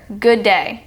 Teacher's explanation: The D in good and the D in day blend together. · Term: geminates